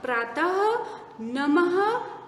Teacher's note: इस विसर्ग को शब्द के अंत में जोड़ते हैं तो शब्द के साथ साथ एक अधिक आवाज, अह की आवाज भी आती है